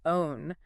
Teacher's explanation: Sometimes that W sound glide at the end is quite soft. Not a strong O-W-N, but more like ooh, and the W is there, just subtle. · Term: Gentle W